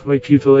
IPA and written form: ˈkwɑːkjʊtəl (Kwakiutl)